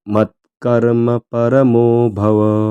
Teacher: त आणि क हे जोडाक्षर आहे त्यामुळे त चा थोडा उच्चार आला पाहिजे